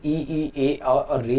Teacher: अग्र भाग से ई ए और री निकलता है ना।